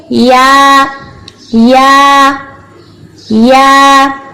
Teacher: یا کے لیے زبان کے درمیانی حصے کو اوپر تالو کی طرف صرف اٹھا لیں, بلند کر لیں. زبان کا درمیانی حصہ اس کے اوپر بالمقابل جو تالو کا حصہ ہے اس طرف اٹھ جائے گا.